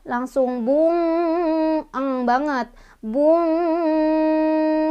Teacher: Saking dia jauh huruf nunnya, huruf nun dengan huruf qaf, qaf itu jauh makhraj hurufnya dengan nun gitu. Jadi udah masuk banget ke pangkal lidah ya, langsung bung banget, bung, sehingga dengungnya lebih terasa, samarnya lebih sedikit. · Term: ikhfa ab'ad